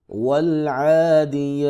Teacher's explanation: یا کے اوپر کھڑی زبر ہے، ایک الف کے برابر لمبا، با ساکن ہے، حروف قلقلہ میں سے ہے، یہاں پہ قلقلہ ہوگا۔